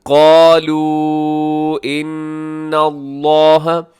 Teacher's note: یہاں جو مد ہے چھوٹی مد ہے، ان پہ غنہ کیجیے گا، نون مشدد ہے، لفظ اللہ کو موٹا پڑھیے گا۔